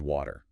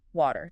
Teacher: That W sound is kind of a glide, isn't it? Your lips move.